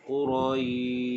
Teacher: Jadi kalau perhatikan pada ayat ini bermula pada huruf ra, huruf ya dan huruf shin. Shin bila kita waqaf dibaca dengan tafasyi, artinya berhamburan udara.